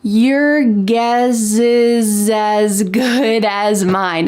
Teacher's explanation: But in American English pronunciation, we often link the S with the vowel next to make a Z sound.